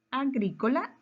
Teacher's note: agrícola es una palabra esdrújula su mayor fuerza de voz está en la antepenúltima